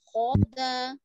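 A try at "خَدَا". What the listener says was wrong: Kho-kho. Nggak kho-da. Masih kho. Kho-nya belum pas ya.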